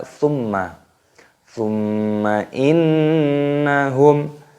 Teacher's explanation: Perhatikan di sini terdapat huruf mim tasdid. Ini hukumnya dibaca gunnah, yaitu cara membacanya didengungkan